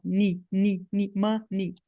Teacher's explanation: não é som de e nem som de i não é ei não é um ditongo não são dois sons é um som vogal só